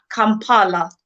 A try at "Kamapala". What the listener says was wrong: Kama. Kamapala. I've got an extra A in there.